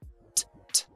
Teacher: Mucho aire. Y fíjate que no hay sonido de voz. Esto no vibra. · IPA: /teibəl/